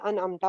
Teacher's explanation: نون کی آواز آٹومیٹکلی ہمارے خود سے بھیجے بغیر ہی ناک کے بانسے میں جا رہی ہے